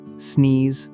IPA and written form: sniːz (Sneeze)